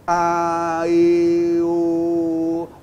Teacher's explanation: A partir do momento que você fala o E e o O, a sua língua, ela automaticamente eleva um pouquinho.